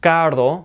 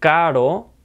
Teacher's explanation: notice how I have to roll my R's because it's a double r